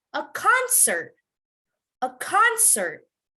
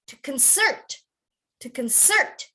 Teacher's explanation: if it's a noun then you have to emphasize the beginning